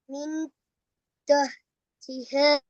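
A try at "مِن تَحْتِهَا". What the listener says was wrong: தா வரப்படாது. மின் த மின் தஹ்திஹ. மின் தஹ்திஹ.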